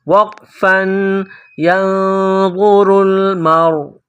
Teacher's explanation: وقف میں آخر والے حرف حمزہ کو سائلنٹ کریں گے